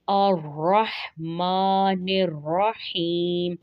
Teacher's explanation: ماں میں غنہ نہیں کرنا، میم کھڑا زبر ما